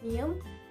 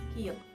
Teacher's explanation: Air comes out through the nose for mium, through mouth for biu.